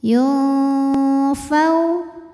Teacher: maka nunnya dibunyikan samar-samar siap-siap menuju Fa disertai bunyi dengung